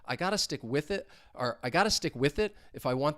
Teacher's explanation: This is because it's a separate clause, and basically, when you hear me say it, I'm going to separate it into 2 different thought groups, and there's going to be a short pause in between there, which is why I'm not linking it over.